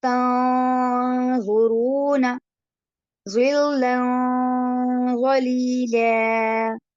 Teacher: نون کی آواز کو ناک میں چھپا کر تھوڑی دیر ناک میں روک لیا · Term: اخفا